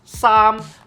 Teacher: This is a high and flat tone.